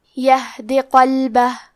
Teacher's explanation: کلمت یہدی میں ہا ساکن ہے لہذا ہمیں ہا کو ظاہر کرنا ہے. دال کے نیچے زیر ہے تو ہم حرف الدال کو صرف زیر سے پڑھیں گے. · کلمت قلبہ میں حرف القاف کی ادائیگی زبان کے جڑ اور تالو کے نرم حصے سے ہے. قاف حروف التفخیم میں سے ہے تو ہم یہ حرف کو موٹی آواز میں پڑھیں گے.